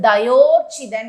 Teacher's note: இங்கு தயா கூட்டல் ஊர்ச்சிதன், தயா எனும் நிலைமொழியில் ஆ நெடில் எழுத்தும் வருமொழியில் ஊ எனுமும் அமைந்தால் அங்கு ஓகாரம், வருமொழியில் ஊ அமைந்தால் ஓகாரம் பெற்று தயோர்ச்சிதன் என்று புணரும்